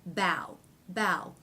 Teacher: it doesn't it's not pronounced ba it's pronounced bow okay so the ah vowel changes to the ao diphthong